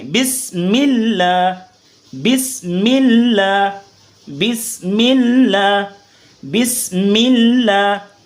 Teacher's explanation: آگے لفظ اللہ کو باریک پڑھیں گے کیونکہ لفظ اللہ سے پہلے زیر ہے. تو جب لفظ اللہ سے پہلے زیر ہو تو کیا ہوگا؟ لفظ اللہ باریک پڑھیں گے